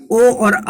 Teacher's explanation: ओ और औ का उच्चारण स्थान कंठ और ओठ है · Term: कंठोष्टम